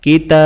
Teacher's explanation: تا کے اوپر کھڑی زیر ہے تو تا کو 1 الف کی مقدار کھینچ کر پڑھا جائے گا